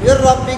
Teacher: نون ساکن کو ہم نے را متحرک میں داخل کیا تو اس سے ایک را مشددہ بن گئی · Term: ادغام